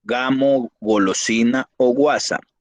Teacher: fonema velar sonoro representa por medio de la letra G